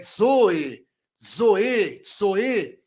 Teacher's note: O zeta, ele é uma consoante dupla, com o som de DZ. Mas ele também pode ser transliterado como Z.